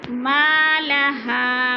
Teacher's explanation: ما پہ الف مدہ، ہا پہ بھی الف مدہ، دونوں کو کھینچ کر پڑھنا ہے